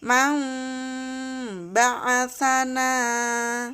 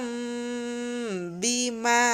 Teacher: nun sukun atau tanwin menjadi Bunyi huruf mim dengan cara mendengung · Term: iqlab